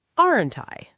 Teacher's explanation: Going up on aren't I? Genuinely asking for reassurance.